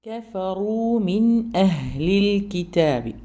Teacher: പല്ലിൽ നിന്ന് കുറച്ചു വിട്ട് തന്നെ പറയണം കഫറു മിൻ അഹ്ലിൽ കിതാബി കഫറു റാ ഹെവിയാണ് ബാക്കിയൊക്കെ ലൈറ്റ് ആണ് കഫറു പിന്നെ പറയുമ്പോൾ റ പറയുമ്പോൾ നല്ല ചുണ്ട് നല്ലോണം റൗണ്ട് ആയിട്ട് വരാം